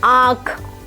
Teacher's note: जिस ध्वनि के उच्चारण में सांस की हवा कुछ तो नाक से निकल जाए और कुछ मुंह से निकले उसे अनुनासिक ध्वनि कहते हैं।